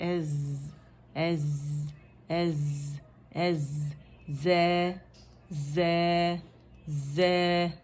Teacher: इसमें आवाज़ चलती है और इसमें सीटी की आवाज़ भी है, सफ़ीर भी है, तो वो ज़रूर सौद से सफ़ीर, ठीक है, चिड़िया की सी आवाज़ होती है।